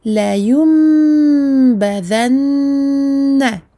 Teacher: Ici, je remplace le noun, sakin, par le tout petit mime inscrit dessus. Donc, je vais tout simplement prononcer un mime au lieu de prononcer un noun. C'est la règle qui s'appelle el-iqlab ou el-qalb.